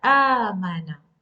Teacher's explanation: The long vowel ya has 2 counts, and this waw has 2 counts. So the sound of Hamza is prolonged with the long vowel a. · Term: hamza with the long vowel